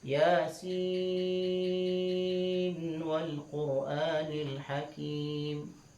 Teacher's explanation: Kalau Hafiz an Asim, Yasin wal Qur'anil Hakim, dibaca dengan izhar